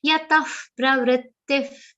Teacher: both places visarga will be pronounced like fa